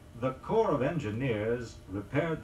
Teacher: Corps, C-O-R-P-S, as in the sanitation corps, the signal corps, and so forth, is frequently mispronounced. The word is still pronounced in the French way, that is, without sounding the P or the S.